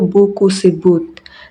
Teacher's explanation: B. Hambatan letup bila bial bersuara.